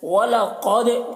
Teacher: قاف کو پر پڑھنا ہے اور دال میں قلقلہ کرنا ہے۔